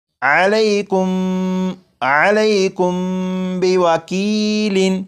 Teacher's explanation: میم ساکن کے بعد یہاں پر با ہے، جب میم ساکن کے بعد با آ جائے تو میم ساکن میں غنہ کر کے پڑھیں گے۔ جیسے یہ لفظ لکھا ہوا ہے علیکم، لیکن یہاں پر میم ساکن کے بعد با ہے تو اس میم ساکن میں غنہ کر کے پڑھیں گے اور یہ پڑھا جائے گا علیکم بوکیل۔